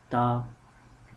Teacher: The ta makhraj is the tip of the tongue which touches on the root of upper front teeth to the inner side.